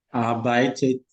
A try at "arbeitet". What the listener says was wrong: Arbeitet. We have to hear the et at the end. Arbeitet.